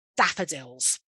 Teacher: three syllables the stress on the first nice round open shape of the mouth